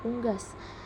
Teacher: vokal u tinggi atas belakang bundar